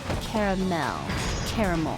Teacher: I say caramel. Sometimes I say caramel, like I put the emphasis on the last syllable.